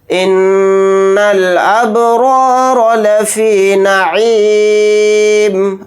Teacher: नून के ऊपर तशदीद है तो इसके अंदर गुन्ना करके पढ़ेंगे। बा के ऊपर जज़म है तो यहाँ पर क़लक़ला करेंगे। रा के ऊपर ज़बर है, इसको मोटा यानी पुर पढ़ेंगे रा को, फिर इस रा को भी मोटा पढ़ेंगे।